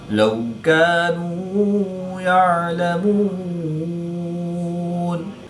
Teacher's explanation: وقف کی حالت میں مد عارض ہوگی، 2 سے 3 الف تک کھینچ کر پڑھیں گے۔